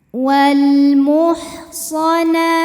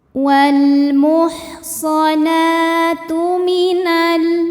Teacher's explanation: karena alif lam menghadapi huruf qamariyah yaitu mim, maka lam sukun kita bunyikan dengan jelas atau disebut dengan idhar qamari.